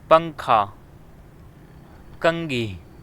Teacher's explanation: مثال نمبر 2، پنکھا، کنگھی۔ ان الفاظ میں نون پڑھتے وقت نون کی آواز نہیں بلکہ اخفا والی آواز نکلتی ہے